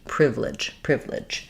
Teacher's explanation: the unstressed syllable in the middle is going to typically get very reduced, and we may say it more just like privilege. · And then even though this looks like the word ledge, in the word ledge it would have the eh sound because it would be stressed. In the word privilege it has the I sound because it's unstressed and it's a reduced vowel.